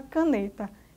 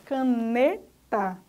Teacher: NE é a sílaba forte, caneta. Então, NE é a sílaba tônica, enquanto K e TA são sílabas átonas.